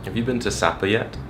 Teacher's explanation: He had a very steady rise.